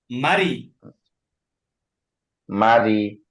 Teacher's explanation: জবর মা রজ মা দ জবর মাই বললে মোটা হয়ে যায় র এর নিচে জের থাকলে রটা চিকন পাতলা